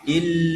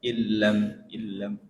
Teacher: lam itu ketika dia bertasdid begitu jangan terlalu lama didengungkan karena lam itu idghamnya tidak tidak ada gunahnya, gak ada dengungnya.